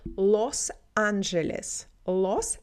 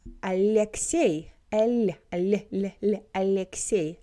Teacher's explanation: Los, L is harder, Los Angeles, but Alexey, Alexey, L is soft